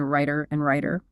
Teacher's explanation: the T in writer is still a voiceless T when the vowel changes